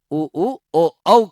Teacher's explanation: उ ऊ तो जीभ का पीछे का भाग। ओ जीभ का पीछे का भाग ज्यादा प्रभावित हो रहा है उ ऊ ओ औ को बोलने में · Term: पश्च स्वर